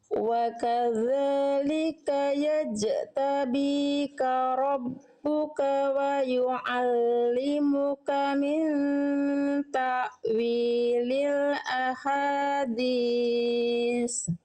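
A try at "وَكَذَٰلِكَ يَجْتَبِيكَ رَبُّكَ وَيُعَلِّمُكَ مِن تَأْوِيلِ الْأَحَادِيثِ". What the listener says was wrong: Haknya hak kecil atau hak besar? Nah, hak kecilnya tegaskan lagi. Nah, aha, aha. Tadi bisikannya, karakter bisikan eh bisikannya nggak jelas.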